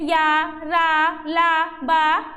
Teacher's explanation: उच्चारण में मुख बहुत संकुचित हो जाता है फिर भी वायु स्वरों की भाति बीच से निकल जाती है उस समय उत्पन्न होने वाली ध्वनि अंतस्थ व्यंजन कहलाती है इसमें